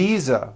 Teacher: I should have said V Visa with a voiced V